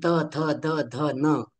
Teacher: यांचं उच्चारण स्थान जर दंत हा आहे दात आहे तर त्यांचं उच्चारण स्थान दाता मधूनच झालं पाहिजे बरोबर या पद्धतीने